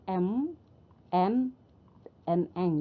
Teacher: Jadi udara keluar melalui hidung. Jadi udara dipaksa keluar melalui rongga hidung. Nah, dengan kata lain, nasal ini contoh konsonannya misalnya huruf M, N, Eng.